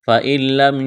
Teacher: نون ساکن کے بعد لام ہے، لام کے اوپر تشدید ہے، تو نون کا لام میں ادغام کریں گے بغیر غننے کے